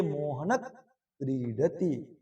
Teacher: यहां पर क वर्ण है तो क वर्ण के पहले जो विसर्ग है वह आधा हो जाता है। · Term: जिहवा मूलय